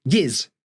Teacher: instead of saying give me you'll often hear people say give us and that just becomes giz